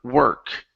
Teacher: We're not going to pronounce the O vowel. We're going to pronounce an ER vowel. So it's like you're saying her, work.